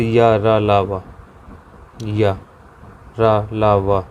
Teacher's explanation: अंतस्थ व्यंजन, इनका उच्चारण समझना, इनका उच्चारण जीभ, ताल, दांत और होठों के परस्पर हटाने से होता है, किंतु कहीं भी पूर्ण स्पर्श नहीं होता। जैसे या, रा, लावा, या, रा, लावा, पूर्णतः इनका स्पर्श नहीं होता है और इनका मतलब ना के बराबर ही प्रयोग होता है, ये कह सकते हैं हम।